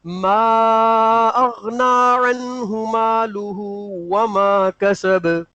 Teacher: وما کہتے وقت ہونٹوں کو گول رکھیں کیونکہ واو ہونٹوں کی گولائی سے نکلتا ہے